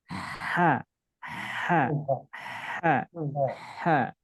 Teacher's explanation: Huruf H keluarnya dari tengah tenggorokan. Ketika diucapkan ada sifat hamasnya, ada sifat rokhawahnya. Hamas itu ada udara yang keluar.